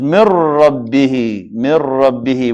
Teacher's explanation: So the noon, we cancel it. We're going to replace it by the ra, and the ra we add it here. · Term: idgham